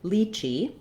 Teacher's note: lychee which rhymes with kiwi first syllable stress or this letter y can also say the i diphthong which